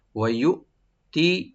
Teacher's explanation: ওয়াইউতি, ওয়াইউতি, ওয়া ওপেন রাখবেন, আর ইউতি হামজাকে রাইট দিব, তবে এখানে যেন কলকলা না হয়, ইকো যেন না হয়। ওয়াইউতি, তি বলবো শুধু, আর নর্মাল করে, টান হবে না।